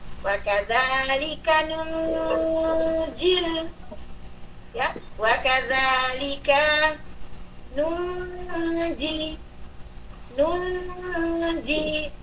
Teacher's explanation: Teman-teman harus baca dengan ikhfa dengan 2 harokat masuk di huruf jim.